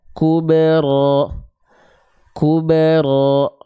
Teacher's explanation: Huruf ba dalam kondisi sukun, teman-teman harus pastikan dia dipantulkan. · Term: kolkolah